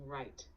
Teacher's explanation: the r should be pronounced with the tongue curled slightly back in your mouth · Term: clear R sound